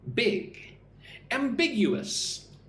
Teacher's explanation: So, it's got four syllables. Ambiguous, put the stress on the second syllable